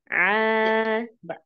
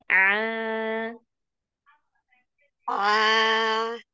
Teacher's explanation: Ain kan keluarnya dari tengah tenggorokan ya. Titiknya itu di katup epiglotis. Kalau katup epiglotisnya kita tekan, maka akan mengeluarkan huruf Ain.